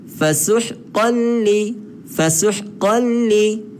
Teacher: Maka kita buang nun tu, kita masuk ke dalam lam, maka dia jadi fasuhqan li, fasuhqan li. Nun tu tak bunyi dah. Dia masuk terus ke lam. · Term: idgham bila gunnah